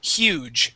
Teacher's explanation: This U sound is an EU sound. So we say huge, and we do pronounce the H.